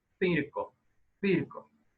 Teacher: como una z española o sea interdental